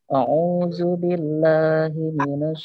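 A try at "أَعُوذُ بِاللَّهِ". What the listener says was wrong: Dari A. Tidak boleh O. A.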